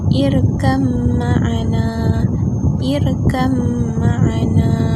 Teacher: Okey, seterusnya pembahagian idgham naqis yang ketiga adalah makhraj ba wajib diidghamkan pada mim secara idgham kamil, kemudian disertai dengung kerana huruf mim bersabdu pada satu tempat